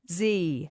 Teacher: It is a voice sound produced by vibrating the vocal cords when pronouncing the voiceless consonant se.